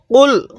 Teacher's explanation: কফটা উচ্চারণের সময় গলার মধ্যে একটু ধাক্কা দিয়ে পড়বো